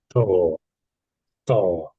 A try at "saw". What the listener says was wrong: Um, you're slightly rushing the first sound. You're slightly rushing it slightly. Saw, saw. Maybe say it slightly longer, perhaps. Longer length of time.